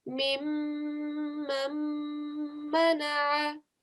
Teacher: make sure you give a 2-second sound on these meme mushaddad